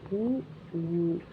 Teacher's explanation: இதழ்களை குவிப்பலால் பிறக்கும் எழுத்துக்கள்